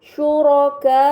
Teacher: Kemudian pada kata syuraka'u terdapat mad bertemu hamzah dalam satu kata, ini dinamakan mad muttasil, maka harus dibaca panjang selama 4 atau 5 harokat